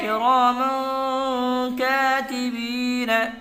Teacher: دو زبر تنوین کے بعد حروف اخفا کے 15 حرفوں میں سے کاف آیا ہوا ہے، اس لیے دو زبر تنوین کی آواز کو ناک میں چھپا کر پڑھیں گے